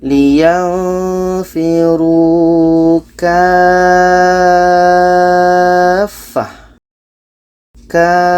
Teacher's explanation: Kita panjangkan 6 harakat baru disambut dengan tasydidnya. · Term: mat lazim kilmi mutsaqqal